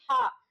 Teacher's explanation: हमारा ह जो है वह स्वर तंत्रियों में क्या करता है? मतलब इसमें क्या होता है? कंपन होता है कंठ के भीतर · तो हमारा ह उच्चारित कहां से हो रहा है? एकदम कंठ से।